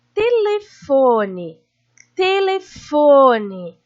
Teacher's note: Foi a sílaba que eu mais demorei para falar. Então, fo é a sílaba tônica, é a sílaba forte. E as outras são as sílabas fracas, ou seja, átonas.